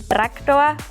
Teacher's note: Bei uns gibt es auch keine harten Konsonanten, also quasi kein T, kein P und auch meistens kein K. Also wir sagen zum Beispiel Traktor und nicht Traktor.